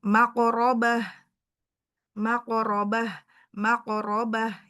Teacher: Nah, ini tebal ya rnya tafhim.